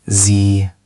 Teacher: That's much more tinny, brighter than zh.